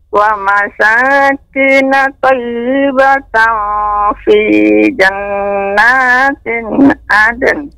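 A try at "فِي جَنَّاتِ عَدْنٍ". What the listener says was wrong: Tidak ada tanwin, Nek. Fi jannati adn.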